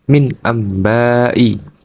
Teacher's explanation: yaitu terdapat nun sukun bertemu dengan huruf yaitu ba cara membacanya dengan mengganti huruf nun sukun atau tanwin menjadi mim sukun disertai dengung dua harakat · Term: iqlab